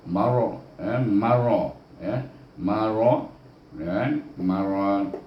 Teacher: Kemudian kita pergi kepada kalimah maradun, iaitu mim baris atas ma, ra baris atas ra, ra baris atas nanti baca dengan tebal